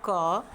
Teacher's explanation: जिन वर्णों के उच्चारण में स्वर की सहायता लेनी पड़े, जैसे अभी मैं बोलूँ क, आप भी बोलिए मेरे साथ क। तो क मैं पढ़ रही हूँ क, लेकिन बाद में किसकी ध्वनि आ रही है? अ की। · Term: व्यंजन